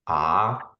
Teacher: Tone 2 would be ah, like you go up, you kind of bring your voice up, and that's why you have the up symbol.